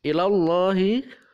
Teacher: lafaz Allah dibaca tebal atau tafkhim